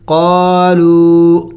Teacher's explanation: قاف الف مدہ، لام واو واو مدہ، تو ان کو ایک الف کا مقدار کھینچنا ہوتا ہے. آگے وہ لو واو مدہ پر چونکہ چھوٹا سا مد بھی ہے تو اس کو تھوڑا سا اور بھی زیادہ لمبا کرنا ہوگا.